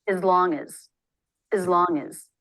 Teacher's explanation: reducing the vowel to the schah makes it easier to say it quickly